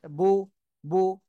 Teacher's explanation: এই যে পেশে সবসময় দুই ঠোঁট গোল হয়।